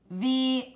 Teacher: with when you make the V sound with your mouth mmm top teeth on your bottom lip except this this time you're using your voice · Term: voice on